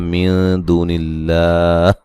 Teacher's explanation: मिन दूनिल्लाह नून साकिन का यहाँ इख्फा होगा बारीक